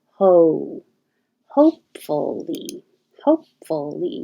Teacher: You're starting more in the position with your tongue low and pulled back, and then moving higher in the back, and the lips getting rounded. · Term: the American O